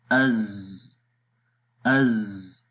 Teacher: حمزہ زا زبر از، تو دیکھیں سانس بند ہو گیا، جاری نہیں رہ رہا۔ رخاوت نرمی کے ساتھ پڑھیں گے اور آواز مخرج میں جاری رہتی ہے۔